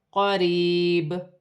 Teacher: وقف کی صورت میں با میں قلقلہ پیدا ہوگا، کیونکہ با حرف قلقلہ میں سے ہے